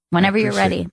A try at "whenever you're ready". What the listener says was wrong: see you're putting a lot of emphasis on you're ready